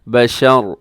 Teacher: وَلَدٌ وَلَمْ يَمْسَسْنِي بَشَرٌ، جی یہاں وقف اب کریں گے تو آخر میں جو تنوین ہے اس کو ہم ساکن کر دیں گے، را کو ساکن پڑھیں گے۔ بشر، جب را ساکن ہوگی تو را موٹی پڑی جائے گی